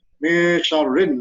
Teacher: After nun sakin, sin comes, so we have to read with slight gunna, that means min sharrin, not min sharrin, min sharrin.